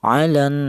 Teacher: Wajah yang kedua boleh dibaca tawas yaitu artinya sedang panjangnya yaitu dua alif atau empat harakat atau empat ketukan